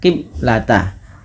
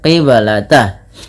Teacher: Kesalahan yang terjadi di dalam membaca bacaan qalqalah yaitu tidak memantulkan bunyi suara ba-nya. Maka dia biasanya dibaca qiblata.